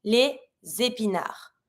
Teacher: I do my link, same as usual, my liaison between my S and my first vowel of the word, and then DS is mute.